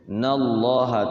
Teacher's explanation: Nallaha lafaz Allah itu lamnya itu dibaca dua harakat ya. Selalu dua harakat lafaz Allah itu nallaha tafkhim.